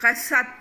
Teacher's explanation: اب یہ تا جو ہے تا، اس کو تو سے نہیں بدلنا